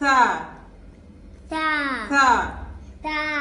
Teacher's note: When tip of the tongue touch the lower part of upper front teeth, then Tha is pronounced. Tha. No whistling sound.